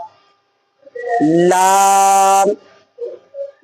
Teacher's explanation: जबान का किनारा उन दाढ़ों से लग जाएगा ला और ऊपर के मसूड़े जो ये दाड़ है उसके ऊपर के मसूड़े से लग जाएगा। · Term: लाम